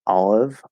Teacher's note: the L is going to connect over, which actually you can keep it a half L, a dark L, and just sort of flow.